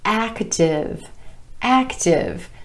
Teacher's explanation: 2 syllables, emphasis on the A vowel sound in the first syllable